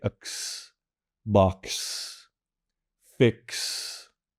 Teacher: This is a hard K, which you have in Vietnamese, especially at the beginnings of words, and a strong S. They're said together, no vowel in between, no pauses in between, which again can be challenging, but it's just simply X, box, fix.